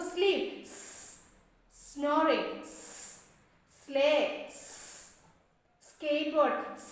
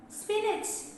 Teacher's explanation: Alveolar, voiceless, sibilant. Tip of the tongue against the teeth ridge, but here the air passes through the Teeth.